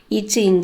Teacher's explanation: இரண்டாவது வாசல் நடு அன்னம். இப்போ நாக்கோட இடை பகுதியை நடு அன்னத்துல சேர்த்து இச்சை இன்ச் அப்படின்னு சொல்லணும்